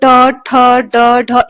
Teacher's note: ट, ठ, ड, ढ इसमें जीभ जो है दांत के पीछे वाले पार्ट को टच कर रही है। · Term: स्पर्श व्यंजन